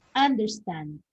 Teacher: Okay, verse 1, understand has 3 syllables, and then understand is a verb. Okay, so we have to use the stress in the last or in the third syllable